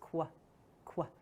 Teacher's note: Q actually represents two sounds next to each other, the k sound and the w sound together. So it's qu, qu.